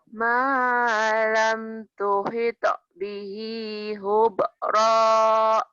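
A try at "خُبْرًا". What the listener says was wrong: Khunya kotor. Khubra. Lagi. Malam tuhita bihi khubra.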